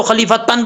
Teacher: یہاں پہ غنہ ہوگا ایک الف کی مقدار، اخفاء کا، نون تنوین کے اخفاء کا